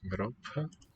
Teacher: I think that P in Europe is aspirated.